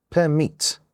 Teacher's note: We have two syllables and the second one is stressed.